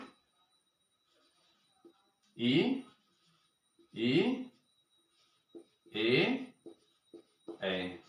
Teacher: तालव्य स्वर का उच्चारण स्थान तालु है